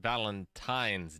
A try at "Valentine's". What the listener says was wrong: The N. There's an N in it.